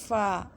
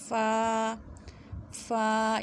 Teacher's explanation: فا میں ایئر فلو ہوتا ہے، یعنی کہ اس کی آواز باہر کی طرف نکلتی ہے اور یہ باریک پڑا جاتا ہے فا۔ یہاں پہ آپ دیکھ سکتے ہیں پکچر میں کہ کس طرح سے آپ نے زبان کا جو سرا ہے وہ ہونٹوں کے اندرونی حصے سے لگانا ہے فا فا۔